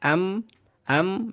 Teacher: Di samping itu juga dia makhrajnya ada di alkhaisyum ya. Alkhaisyum itu ada di rongga hidung sama dengan huruf nun. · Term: huruf mim